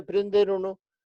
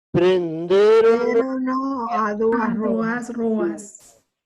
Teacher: na pronuncia prenderono non temos unha xeminada como en italiano, non há 2 consoantes, sino unha só.